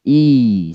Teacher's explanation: I senyum gigi atas bawah bertemu lalu capkan yg panjang ya gigi atas bawah bertemu Lalu ucapkan yg panjang ih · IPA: iː